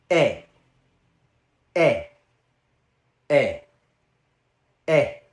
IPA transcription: ɛ